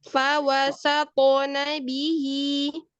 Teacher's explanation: to sukun jangan pakai hamzah